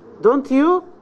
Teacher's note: You raise your voice on you. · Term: high rise